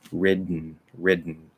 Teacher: that's too separated so we're going to actually kind of let let that d after we sort of stop it we're going to let it push back out through the nose without releasing ridden ridden so i'm just going to that position stopping it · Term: nasal plosive